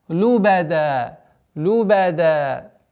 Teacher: А при остановке у нас аннулируется танвин и остается удлинительный звук фатха.